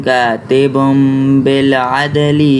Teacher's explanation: با پہ جو 2 پیش ہے اس کے اندر جو نون کی آواز آئے گی اس کو میم میں تبدیل کر کے پڑھنا ہے